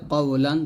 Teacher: যখন জবরের পর জজমালা ওয়াও আসবে, একইভাবে জবরের পর যখন জজমালা ইয়া আসবে, এটাকে বলা হবে লিনের হরফ। লিনের হরফ হলে তাড়াতাড়ি পড়তে হবে, এখানে কিন্তু টানা যাবে না, তাড়াতাড়ি পড়তে হয়।